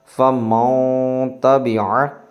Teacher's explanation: نون ساکن کے بعد حروف اخفا میں سے یہاں پہ تا آ گیا، اس لیے یہاں پہ اخفا ہوگا یعنی غنہ کر کے پڑھیں گے